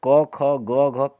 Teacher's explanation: क ख ग घ कंठ ध्वनि है